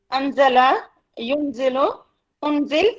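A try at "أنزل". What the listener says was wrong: انزل، دیکھو اون نہیں، انزل، آپ اس کے فعل ماضی سے بنا رہے ہیں نا، تو انزل نہیں، منزل، منزل، انزال،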